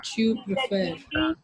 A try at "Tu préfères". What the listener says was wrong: Voilà, très bien.